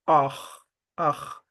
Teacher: The R, you do not pronounce it like in English. You pronounce it on your throat